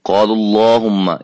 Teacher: قال اللہم، اس اللہم کے لام سے پہلے پیش آ رہی ہے، یعنی کہ اللہم سے پہلے کیا آ رہی ہے، پیش، اللہم کا جو لام ہے اس کو ہم موٹا ادا کریں گے، خوب مفخم کر کے پڑھیں گے